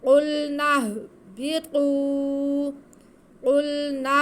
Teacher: قلنا، قلنا، آگے با کے نیچے زیر اور قا پہ پیش ہے، واو ساکن ہے، واو ساکن سے پہلے پیش ہو تو واو مدہ ہوتی ہے، تو قا کی آواز کو ہم ایک الف کے برابر کھینچ کے پڑھیں گے